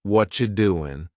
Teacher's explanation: we've cut out completely the word r and the word you just becomes cha what you doing you might notice too extra tip that the